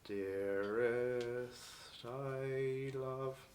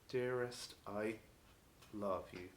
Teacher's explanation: There's no glottal stop in between. So we want this continuous connection of the sound.